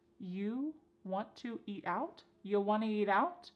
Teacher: We've dropped the question word completely. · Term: reduce this question